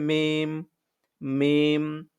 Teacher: উভয় ঠোঁট মিলিয়ে ঠোঁটের শুকনো জায়গা থেকে উচ্চারণ হবে মিম